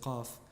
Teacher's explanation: the qaf, which is often dropped in many of the dialects in that region, instead of saying af, they say qaf, which is a commonly used letter which is dropped.